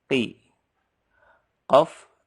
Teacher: pangkal lidahnya disentuhkan ke langit-langit. Lebih dalam suaranya.